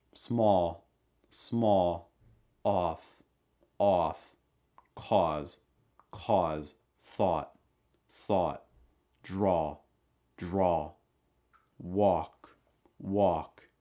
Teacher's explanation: awe sound mouth wide back of your tongue raised front of your tongue down